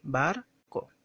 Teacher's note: la segunda sílaba es la que se pronuncia sin fuerza de voz, de forma natural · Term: Átona